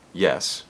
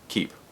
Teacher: The Y in yes is basically the same sound as the E in keep, but in one word it's a consonant, yes, and another it's a vowel, keep.